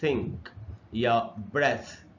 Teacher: TH से अगर थ बने तो ये भी सिर्फ हवा का इस्तेमाल करता है। जैसे थिंक या ब्रेथ, तो इसमें भी वोकल कॉर्ड का इस्तेमाल बिल्कुल भी नहीं होता।